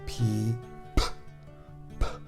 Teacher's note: it's a voiceless sound means it's just air passing over the box so no voice